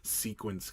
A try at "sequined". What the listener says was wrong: Sequined You always say sequence.